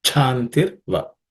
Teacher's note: this is the second letter in the cha varga, cha class of consonants. So it has to be aspirated like cha.